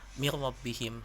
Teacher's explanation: Nah, itu idgham yang masuk, idgham yang dimasukkan, jadi tidak tertampak nun matinya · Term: idgham bilaguna